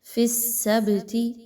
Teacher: منکم فی السبت، با پر جزم کی علامت ہے، با حروف قلقلہ میں سے ہے، یہاں پر با کو ہلا کر پڑھا جا رہا ہے، آواز کو اس طریقے سے نہیں پڑھنا آپ نے، فی السبت بلکہ فی السبت، سبتی تھوڑا سا ہلا کر با کو پڑھا جائے گا۔